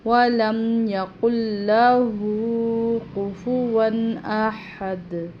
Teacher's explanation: سانس نہیں لینا، وقف نہیں کرنا۔ وَلَمْ يَقُلْ لَهُ كُفُوًا أَحَدٌ، یہاں پر لہو کو 2 الف کے برابر لمبا کرنا ہے